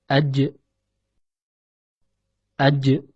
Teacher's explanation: Perlu diperhatikan bahwasanya posisi tengah lidah tatkala mengucapkan huruf ini adalah menempel pada langit-langit atas, sehingga menghalangi nafas dan suara yang akan keluar. Huruf jim termasuk ke dalam kategori huruf qalqalah, yaitu huruf yang ketika dalam keadaan sukun dibaca memantul